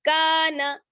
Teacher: ارأیت ان کان، کاف الف زبر کا، نون زبر نا، کان. کاف میں الف مدہ ہے اس لیے اس کو تھوڑا سا کھینچیں گے، ایک الف کے برابر